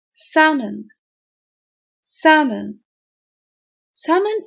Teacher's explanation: it's written with L but it's never pronounced that L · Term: silent